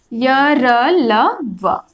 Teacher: ठीक है, य, र, ल, व ये 4 व्यंजन है जिसका उच्चारण में निकट तो आते हैं, होठ, दांत, जीभ, तालु सभी एक जगह एकत्रित होते हैं, परंतु जीभ जो है किसी भी जगह को पूर्ण रूप से स्पर्श नहीं करती है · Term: अंतस्थ व्यंजन